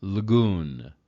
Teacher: there's no real break between the L and the g · almost the L and the G go together with just a slight breath in between them, so that because you can't have two consonants directly attached to each other without some kind of break.